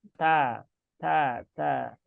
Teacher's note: ta juga dia dibaca ada keluar udara kecil ya ketika membaca huruf ta. Maka bukan ta ya, tapi ta kecil ya.